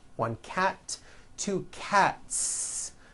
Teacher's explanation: cat ends with an unvoiced T TT one cat two cats again the s ending is unvoiced